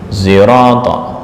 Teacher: sirata dibaca ismam antara shad dan za